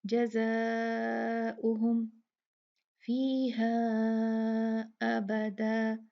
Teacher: یہ مد منفصل ہے کیونکہ فیہا ایک لفظ ہے، ابداً دوسرا لفظ ہے، تو یہ فیہا 4 کاؤنٹ ہی ہے